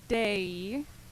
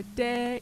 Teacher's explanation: the first one i kind of put a little glide between the two vowels